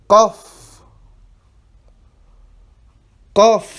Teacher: le qaf, ça vient du fond de la gorge.